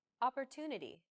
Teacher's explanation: The stressed syllable to in opportunity is deemed more important, so it's pronounced longer than all other syllables.